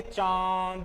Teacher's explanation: अगर ध्वनि नाक प्लस गले से आ रही है तो वहां पर क्या होगा, चंद्र बिंदु